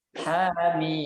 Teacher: Jadi nggak boleh lebih dari 2 harokat. Makanya ketika baca hamim, ha-nya dibaca 2 harokat, mimnya yang dibaca 6 harokat.